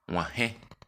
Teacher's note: Se pronuncia agregando al sonido ge del castellano un timbre o acento nasal.